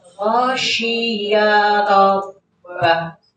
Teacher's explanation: Ya-nya pendek, langsung ke roh.